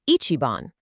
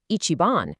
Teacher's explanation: When a native speaker means number one literally, the pitch falls, ichiban. But when they mean the best, the pitch actually rises on the second half, ichiban. It's a tiny, subtle shift, but it carries entirely different meanings. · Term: pitch accent